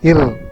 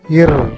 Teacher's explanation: The difference between ir and ir is that in the first case, the tip of the tongue touches the base of the upper teeth, and in the second case, it touches the middle of the palate